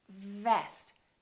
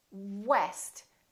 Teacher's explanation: So V is just the lower lip touching the upper teeth. Vest. And W, west.